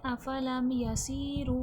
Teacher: सीन हुफ सफीर है सख्ती सीठी वाला हरफ है सख्ती सीठी के साथ अदा किया जाएगा सी में देखें या मदद्दा है या साकिन से पहले ज़ेर है या मदद्दा है खींच के पढ़ा जाएगा।